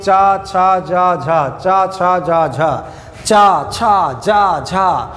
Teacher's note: तो स्पर्श संघर्षी वर्ण क्या है? जिनके उच्चारण में उच्चारण स्थान को हवा छूते हुए तो निकले, लेकिन रगड़ती हुई भी साथ साथ निकले।